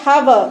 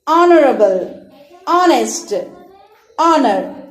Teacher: So here we will keep the H silent and we will use the word O while pronouncing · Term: silent H